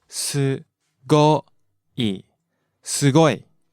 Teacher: starts out low and goes up.